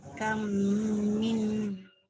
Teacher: Okay, yang berbunyi adalah mim kedua, bukan mim pertama. Kemudian tambah sikit, bacaan ni melibatkan dengung, jadi bacaan ni kena panjang.